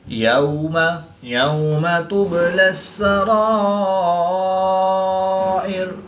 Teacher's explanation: با ساکن ہے تو یہاں پر قلقلہ صغریٰ کر کے پڑھیں گے